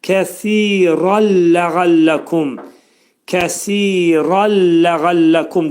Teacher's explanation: Kə incə samit, si burada iki səs qədər uzadılacaq, pəltək oxunacaq. Kəsi, dil iki dişin arasına girəcək, pəltək deyiləcək